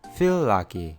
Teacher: Tenemos dos sonidos l juntos. Entonces, de nuevo las dos palabras comparten el sonido.